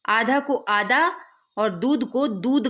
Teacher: इसके उच्चारण में अल्पप्राणीकरण की प्रवृत्ति मिलती है, जैसे कि आधा को आधा और दूध को दूध कहा जाता है या लिखा जाता है, लिखा भी जाता है और कहा भी जाता है।